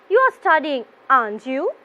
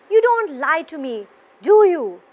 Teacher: my voice will be going up towards the end of my question so intonation is going up